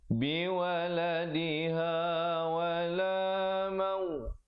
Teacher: Mauludul, idgham bila gunnah. Asalnya mauludun, tapi bila datang lam jadi mauludul lahu biwaladih.